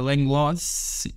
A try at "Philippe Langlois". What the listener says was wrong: Langlois, you don't have to pronounce the S, but close enough.